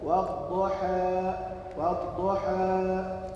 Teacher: النطق بالألف بحالة بين الإمالة المحضة والفتح المتوسط، ويقال له التلطيف، وبين بين وبين اللفظين والإمالة الصغرى.